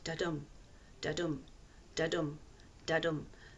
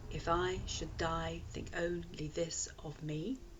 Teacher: with the stress or the emphasis on the second beat, a heartbeat in effect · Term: iambic beat